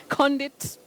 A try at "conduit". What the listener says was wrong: We don't say conduit or conduit. That sounding ndi, like the digraph in Kiswahili of ndoa is not there. You don't say conduit. No. You say conduit. Conduit. Not conduit. Conduit. Conduit. Conduit. Dew. Then it. Do it. Do it. Conduit.